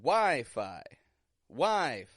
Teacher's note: the first syllable the beginning part of the word is stronger than the second part of the word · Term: syllable stress